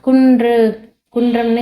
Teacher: குன்றம் சொல்லும்போது என்னன்னா அன்னத்தின் மையப்பகுதியை வந்து உரசுது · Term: வல்லின ரகரம்